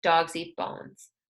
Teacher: for a statement, we let the tone fall at the end of a sentence